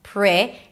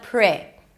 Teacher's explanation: And then it's a relaxed I sound. Not pretty, but pre.